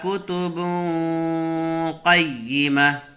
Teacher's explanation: یہاں اخفاء کا قاعدہ ہوگا، تنوین کے بعد حروف اخفاء میں سے قاف آ رہا ہے تو نون کی آواز کو ناک میں چھپا کر پڑھیں گے